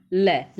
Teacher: बगल का। लय का उच्चारण करता है तो प्राण वायु थोड़ा बगल से छू के निकलती है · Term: पार्श्विक व्यंजन